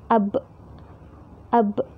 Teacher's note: Kalau kita mensukunkan huruf yang kita tuju seperti huruf ba, ab. Nah, huruf ba sendiri di sini termasuk ke dalam makhraj asyafatain, yaitu dua bibir. Karena mengucapkan huruf ba itu kedua bibir kita harus, bahasanya harus mingkem ya.